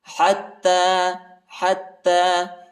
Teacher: وما يعلمان، وما يعلمان، وما يعلمان من أحد، من أحد، من أحد حتى، حا کو تا کے ساتھ ملائیں گے اور تا پر جو ہے شد آیا ہے، سختی کے ساتھ شدت کے ساتھ پڑھیں گے، اور کڑا زبر بھی آیا ہے، اس کو ایک الف کی مقدار تک کھینچیں گے۔